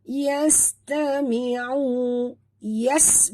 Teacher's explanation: bunyikan sofir pada sin yang mati. Tami'u, di sini huruf ain jaga makhraj.